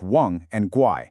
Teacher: For words like wang and guai, you have to make sure your voice actually goes down and then comes back up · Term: dipping tone